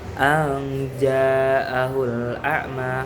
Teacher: nun mati bertemu dengan huruf jim yang merupakan ikhfa a. Jadi dengungnya itu tengah-tengah. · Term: ikhfa ausat